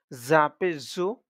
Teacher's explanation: জিহ্বা বাহিরের দিকে আসবে না কিন্তু আওয়াজটা শীষ শীষ দিয়ে উচ্চারণ আসবে